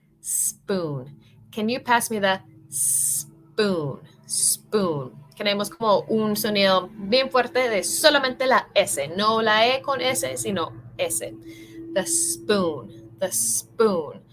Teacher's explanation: English so when you see a word that begins with s practice putting emphasis on the first s so you kind of want to hiss like a snake